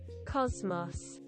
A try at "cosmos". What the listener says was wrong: Cosmos. It is like more Z sound.